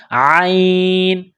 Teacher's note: عین گلے کے درمیان سے عین کو نکالنا ہے زور لگا کر